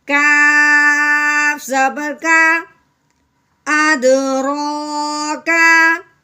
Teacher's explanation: ہاں جی، آگے دیکھیں یہ ہے کاف، ٹھیک ہے، کاف کے اوپر آ گئی زبر، کاف کو ہم نے یعنی باریک کر کے پڑھنا ہے، موٹا کر کے نہیں پڑھنا۔